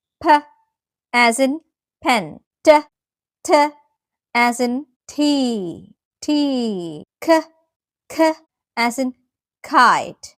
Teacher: Voiceless consonants എന്നാൽ ആ sound ഉച്ചരിക്കുമ്പോൾ കേൾക്കില്ല എന്നതല്ല അർത്ഥം, നമ്മുടെ വോക്കൽ കോഡ്സ് ചലിക്കുന്നില്ല എന്നാണ്.